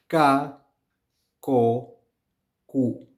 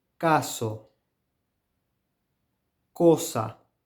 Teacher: this sound is softer than the English as it is produced without aspiration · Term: k sound